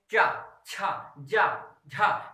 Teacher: इसको ये देखिए स्पर्श के तो है ही है, देखिए स्पर्श और संघर्षी मतलब इसको ये कहिए चा, छा, जा, झा, तो लग रहा है जैसे मुख से कुछ रगड़ के निकल रहा है, इसीलिए इसको कहते हैं स्पर्श संघर्षी।